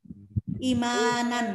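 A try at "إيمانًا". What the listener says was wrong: I, panjangkan hamzahnya.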